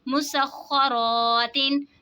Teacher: तशदीद वाले हुरूफ को जमाओं के साथ पढ़ेंगे. अलिफ से पहले ज़बर है, अलिफ मद्दा होगा इसीलिए हमने इसको खींच के पढ़ा